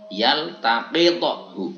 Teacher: Tapi makhrajnya berjauhan. Kalau to ini di bagian depan, mulut bagian depan, sedangkan qaf ini di mulut bagian belakang mendekati tenggorokan.